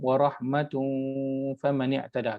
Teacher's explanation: Warahmatun, tanwin lepas itu fa, kalau kita sambung warahmatun faman i'tada, kita akan dengung.